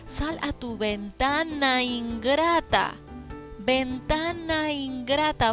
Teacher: vocal con otra vocal dentro de un verso en este caso la primera palabra termina en vocal y se une a otra palabra que empieza con vocal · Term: sinalefa